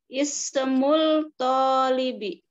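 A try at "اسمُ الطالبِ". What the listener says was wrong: Oh, ini termasuk huruf syamsiyah. Berarti lamnya nggak dibaca langsung. Ismut tolibi.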